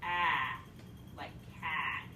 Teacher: near open front middle would be ah like cat